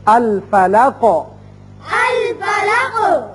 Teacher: الفلقی قوف حروف مستعلیہ میں سے ہے اور حروف قلقلہ میں سے بھی ہے، جب اس پر وقف کریں گے قوف ساکن ہوگا تو اس کی صفت قلقلہ ادا ہوگی